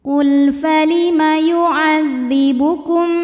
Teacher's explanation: Karena lam sukun di hadapannya bukan lam lagi juga bukan huruf d. Maka lam dibaca jelas. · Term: lam mutlak